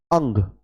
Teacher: पहले ए बोला फिर ए के साथ बिंदी का उच्चारण हुआ